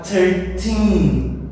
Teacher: a sílaba tônica, a stressed syllable, está no teen